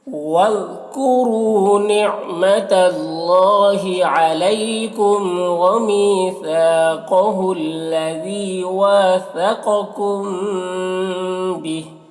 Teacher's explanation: واثقکم، یہاں پر الف مدہ ہے تو اسے ایک الف کے برابر کھینچیں گے۔ ثقکم قاف کو پر پڑھیں گے، حروف مستعلیہ میں سے ہے۔ کم یہاں پر میم ساکن کے بعد با ہے تو یہاں پر اخفاء شفوی ہوگا، اسے غنہ اور اخفاء کے ساتھ میں پڑھیں گے۔